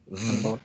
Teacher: So it's a labiodental, voiced, fricative